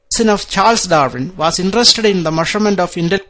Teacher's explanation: So rising tone after Darwin, and rising tone after intelligence.